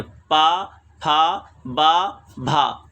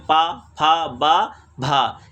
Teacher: आवाज़ देखिए, दोनों ओठ आपस में टच हो रहे हैं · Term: ओष्ठ से उच्चारित वर्ण